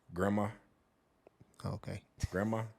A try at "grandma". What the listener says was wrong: just take that D out